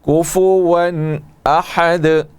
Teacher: دال کو ساکن کر کے دال میں قلقلہ کریں گے